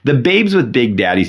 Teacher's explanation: Big and dad are both stress syllables, but you could you can almost elied the big into the dad as the main stress syllable there.